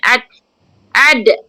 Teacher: Ad nipis dan ada sifat qalqalah. Datangnya sifat qalqalah bila dimatikan.